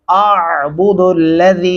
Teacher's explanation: हम लाम को दो अलिफ के बराबर तक लंबा करेंगे। और यहाँ पे अलीफ की आवाज़ अलग से और आइन की अलग से आवाज़ महसूस होनी चाहिए, पता चले कि आपने वाकई ही में तलफ़्फ़ुज़ अदा किया है।